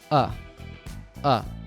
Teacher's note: the article A usually just reduces to what's called a schwa sound.